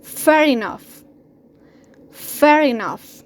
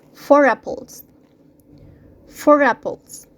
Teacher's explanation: the first one ends to R and the second one starts with vowel. The R is going to sound. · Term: linking R